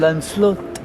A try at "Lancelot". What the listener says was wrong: you are not supposed to pronounce the T.